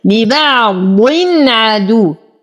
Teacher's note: تنوين بعده حرف العين فالحكم إظهار حقيقي بدون غنة